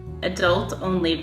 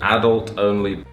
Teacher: Stress on the second syllable in America, stress on the first in England.